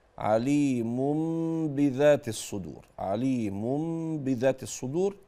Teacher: الحرف لم يتكا فيه على المخرج الاصلي وهو الشفتان لذلك قالوا ان هذه الميم المقلوبه عن النون ميم مخفاه للغنه الطويله التي فيها والتي توجه هذه الغنه النطق الى الخيشوم اكثر من الشفتين هذا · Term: حكم الاقلاب